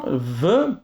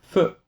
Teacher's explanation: dans le son v, tes cordes vocales vont vibrer alors qu'avec le son feu, ce n'est pas le cas